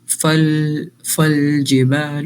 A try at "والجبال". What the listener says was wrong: نہیں واو ہے والجبال.